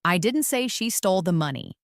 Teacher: First, emphasize the word I. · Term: sentence stress